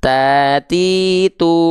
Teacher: ujung lidah kita kita sentuhkan dengan pangkal gigi seri atas kita